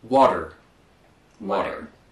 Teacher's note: The T becomes a D. When the T is in the middle of a word, usually it's pronounced with the D sound.